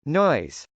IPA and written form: nˈɔɪz (noise)